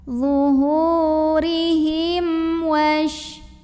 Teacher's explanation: Karena ada mim sukun yang menghadapi huruf selain mim dan ba, yaitu hurufnya waw. Maka mim sukun ini dibunyikan dengan idhar atau bunyi M-nya ini jelas, tidak ditahan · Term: idhar syafawi